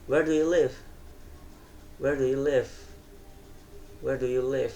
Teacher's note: nada nada suara turun di kata live intonasi turun menunjukkan bahwa pembicara mengharapkan informasi yang lebih lengkap bukan sekedar jawabannya atau tidak gitu kayak where do you live gitu. · Kayak nada suara turun di kata live.